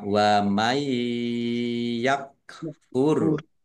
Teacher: nun sukun bertemu dengan huruf ya, bacaan idgham bi gunnah, masuk dengan mendengung, yaitu mendengung ya, ditandai yaknya ada tasdidnya.